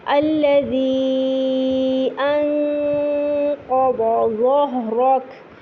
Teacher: انقض کیونکہ قاف موٹا لیٹر ہے تو آواز تھوڑی موٹی ہو جائے گی، حلق سے اس کو موٹا کرنے کی کوشش کیجیے گا. الذی پر آپ دیکھ رہے 4 حرکت کا مد ہے، اس کو لمبا کیجیے گا.